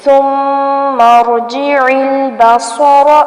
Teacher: صاد کو پر کرنا ہے، یہاں پر را کو بھی پر کرنا ہے